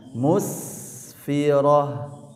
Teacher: Awas huruf sinnya tidak boleh ditarik lagi. Jadi suara sinnya tipis terjaga.